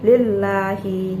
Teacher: Pada ayat pertama ini terdapat lam takkik di sini, ada lam berharakat kasrah, dia bertemu dengan lafaz Allah dan itu dibaca tipis, jadi lillahi.